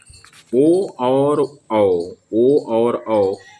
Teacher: तो नौवें प्रश्न के सही उत्तर की अगर हम लोग बात करेंगे तो कंठोष्ठ होता है। ओ और औ जो वर्ण होते हैं इनके स्वर जो होते हैं कंठ से उत्पन्न होते हैं। अतः यह कंठोष् वर्ण कहलाते हैं।